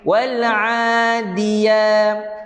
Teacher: Jangan baca ain dengan hamzah wal adiyah. Baca dengan ain wal adiyah.